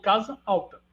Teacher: percebam como a vogal a é tônica a primeira vogal do do alta é tônica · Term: iato